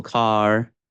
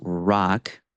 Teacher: R is a sound that in English does not require a contact between the tongue and other articulators in your mouth. The tongue pulls back and bunches in the middle. So car or words such as rock, especially in an initial position, you really get that retroflex tongue movement. · especially in an initial position, you really get that retroflex tongue movement. Less so at the end of a word. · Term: American R sound